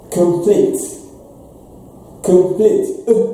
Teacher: So the first syllable is without stress. That is why we have the short sound. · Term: schwa sound